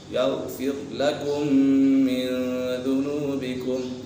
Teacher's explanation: یغفر لکم من ذنوبکم یہاں پر میم مشدد ہے، میم مشدد میں سے غنہ ہوتا ہے، یہاں پر ادغام شفوی بھی ہے، میم ساکن کے بعد دوسری میم آ جائے تو میم ساکن میں ادغام شفوی ہوگا، یعنی غنہ کر کے پڑھیں گے۔ من ذنوبکم یہاں پر اخفاء کا قدر لگ رہا ہے، نون ساکن کے بعد دال حرف اخفاء میں سے ہے تو یہاں اخفاء ہوگا، یعنی غنہ کر کے پڑھیں گے۔